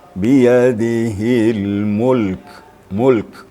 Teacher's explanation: Harus dengar sedikit mahmusnya atau hamasnya. Karena sifat kaf itu hamas, ya. Ada hembusan sedikit.